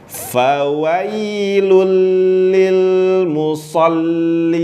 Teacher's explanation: Fawailul tipis. Lil di lam sukun ada tawasud, suara berjalan sedikit. Fawailul lil monyong tarik lagi.